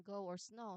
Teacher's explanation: And then O makes one O sound. So, this is the long O vowel sound, often a diphthong